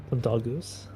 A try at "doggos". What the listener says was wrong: It sounds like you're saying dogoon. Dogoon.